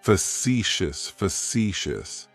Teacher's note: It's like you're just saying the letter C for sea. That first syllable has that schwa, that sound. · Facetious has 3 syllables, and the stress is on that second syllable. It's like you're just saying the letter C for sea.